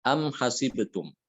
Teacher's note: jadi mim sukun itu tetap ada walaupun dia diwasolkan ataupun diwaqafkan